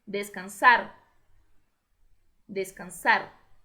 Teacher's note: Somente o R vibrando no final.